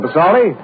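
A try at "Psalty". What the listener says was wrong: P is silent, son, as in for Sam.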